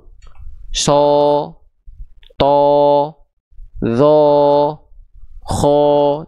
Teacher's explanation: semua vokal o-nya itu dihasilkan sekali lagi karena pangkal lidah naik bukan karena monyong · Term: huruf-huruf tebal